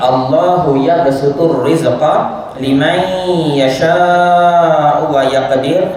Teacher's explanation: Teruskan pada liman, ya, nun mati, nun sakinah bertemu dengan huruf ya, dibaca dengan kadar, dibaca dengan dengung sebanyak 2 harakat, ya, idgham ma'al ghunnah, idgham ma'al ghunnah. · kita ada qalqalah kecil, ya, qalqalah sughra pada yabsutu